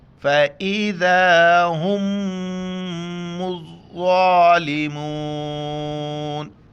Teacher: فَإِذَا ہم یہ میم اس میم میں بالکل ادغام ہو جائے گا تو اس میم کو ہم نہیں پڑھیں گے. ہا کو سینے سے ادا کرتے وقت میم کے ساتھ ملائیں گے اور شد کی وجہ سے غنہ کریں گے. پھر میم کو ضوا کے ساتھ ملائیں گے.